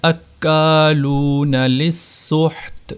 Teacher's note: تو یہاں پر پڑھا جائے گا اکالون للسحت، یہ سین تشدید والا ہے، مشدد ہے، اس کو سختی سے ادا کرنا ہے۔